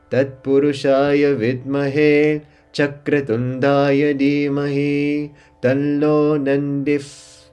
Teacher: So we have Chak, middle, Ra, middle, Tun, going low, Da is stretched, and Ya, singular, going high.